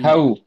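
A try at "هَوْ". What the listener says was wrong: ஹை. சின்ன ஹை இல்ல, பெரிய தான். ஹை. ஹா வரக்கூடாது. ஹா வரக்கூடாது, ஹே தான் வரணும்.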